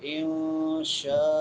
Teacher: نون ساکن کے بعد حروف اخفا میں سے شین ہے، تو نون ساکن پہ اخفا کریں گے